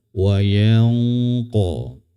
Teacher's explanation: qof adalah huruf tebal jadi dengungnya juga berpengaruh menjadi tebal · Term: ikfa hakiki, ikhfa hakiki